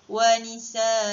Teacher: Cara bacaannya ketika waqaf adalah dengan menukarkan fathatain tersebut kepada baris atas, dan cara bacaannya hendaklah dibaca dengan panjang dengan kadar 2 harakat